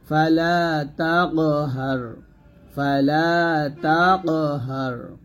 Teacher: একটি ফুটবল মাটিতে নিক্ষেপ করলে যেরূপ আওয়াজ হয় অনুরূপ আওয়াজ করে কলকলা করে পড়তে হবে